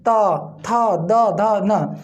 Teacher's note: ता, थ, द, ध, न को जब हम उच्चारण करते हैं या बोलते हैं तो हमारी जिह्वा जो है बताया जाता है कि ऊपर वाले दांत को स्पर्श करती है। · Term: दंत ध्वनि